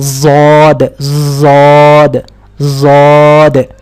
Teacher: اس کی آواز نکلے گی موٹی بھی اور خوب درازی والی بھی